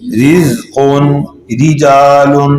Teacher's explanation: جی را کو باریک پڑھنے کی 5 صورتیں. را کے نیچے جب زیر ہو تو را کیا ہوگی؟ باریک ہوگی